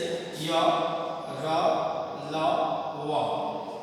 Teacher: तो वैसा व्यंजन वर्ण जिसका उच्चारण स्वर और व्यंजन के मध्य होता है। इनका उच्चारण करते समय जीभ मुख के किसी अंग को स्पर्श नहीं करती। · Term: अंतःस्थ व्यंजन